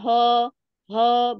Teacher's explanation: kalau Ho dia keluarnya berarti masih dari tenggorokan bagian bawah